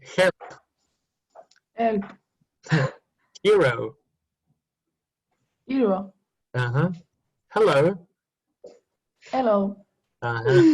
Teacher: So they eat the H, so no H is very strange.